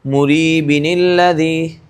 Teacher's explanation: تنوین کو ہٹایا جائے گا اور پھر وہاں سے نون نکال کر اسے زیر دیا جائے گا، جسے نون قطنی کہا جاتا ہے، اور اسی لیے دیا جاتا ہے تاکہ آگے والا جو حرف ہے وہ آسانی کے ساتھ پڑھا جا سکے، جو کہ ساکن حرف ہے۔